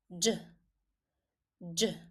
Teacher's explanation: in the pronunciation of the letter, you can hear a hidden D, like in jar in English, jar, jam. When you are pronouncing these two words, you find yourself having a hidden D.